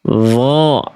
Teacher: Dho, dia naik pangkal lidahnya. nggak terhampar ke bawah.